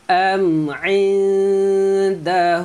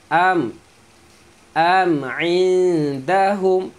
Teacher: Jelaskan bunyi mim sebab mim ni mim mati bertemu ain, jadi jelaskan. Am indahum nun mati bertemu dal, dengung, sembunyikan bunyi nun.